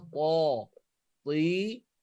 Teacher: Makhrajnya kita letak ujung lidah ni dekat pangkal gigi atas. Tapi kena angkat pangkal lidah kita ni, kena tegang kan. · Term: huruf ta